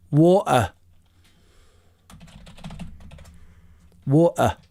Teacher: the southerners actually glottalized te's even in the middle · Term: glottalize T's